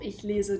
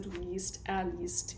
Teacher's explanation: we're changing our center vowel from e, to this diphthong, I-E.